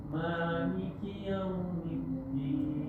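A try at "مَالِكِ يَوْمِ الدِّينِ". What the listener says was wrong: Li-nya lebih jelas Pak. Maliki yaumiddin.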